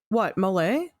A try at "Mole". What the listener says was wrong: I think it is Mole. But you keep swallowing the O. So I keep thinking you're saying Javier Mole from